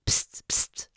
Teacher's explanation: rien ne vibre, consonne sourde